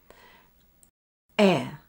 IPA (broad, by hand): eə